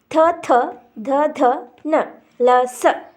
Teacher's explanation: ಅಂದ್ರ ಹಲ್ಲು ಇಲ್ಲಿ ತ ವರ್ಗದ ತ ವರ್ಗ ದಂತದಿಂದ ಉಚ್ಚಾರಣೆ ಆಗ್ತಕ್ಕಂತ ಅಕ್ಷರಗಳ ತ ವರ್ಗದ ಅಕ್ಷರಗಳು ಹಲ್ಲುಗಳ ಬಳಿ ಹುಟ್ಟುವುದರಿಂದ ಅವು ದಂತಾಕ್ಷರಗಳು ಅಂತಂದು ಕರೀತೀವಿ